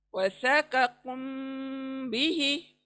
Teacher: मीम को हम छुपा रहे हैं नाक में, क्योंकि फॉलोड बाय ब